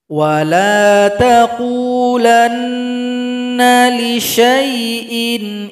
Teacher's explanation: syin dibaca pendek langsung gabung kepada huruf ya